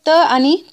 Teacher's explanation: त आणि थ चा उच्चार करताना आपल्या जिभेचा जो टोक आहे तो दात्याच्या पाठीमागच्या साईडला टच करत असतो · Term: दंत्य वर्ण